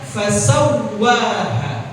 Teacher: Memang dia tasydidnya, musyaddadahnya aslinya begitu. Bukan karena idgham, makanya nggak ditahan, cuma dibaca fasawwaha.